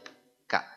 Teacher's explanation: huruf Kaf ini diucapkan antara pangkal lidah dengan langit-langit yang bertulang sekaligus tidak bertulang ya repot kan Ya sudah k sama persis dalam bahasa Indonesia